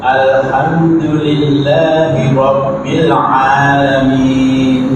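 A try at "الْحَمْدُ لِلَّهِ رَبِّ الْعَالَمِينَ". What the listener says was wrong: Bi, sempurnakan bi. Rabbi.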